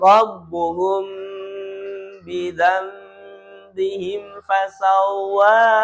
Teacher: antara huruf mim sukun dan ba ketika bertemu maka ditahan ya